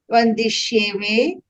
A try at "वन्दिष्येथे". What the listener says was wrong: Vandishyethe. Tha, not ve.